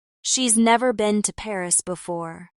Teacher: Stress never and Paris.